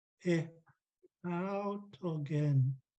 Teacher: Notice I'm trying to pronounce the accent over the long A here. He autogen. The rest is low tone.